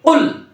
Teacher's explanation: জিবার গোড়াটা ধাপাস করে তালুতে যায় মিলবে শক্তের সাথে এবং মোটার সাথে।